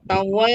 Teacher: mad asli alif dibaca panjang 2 harakat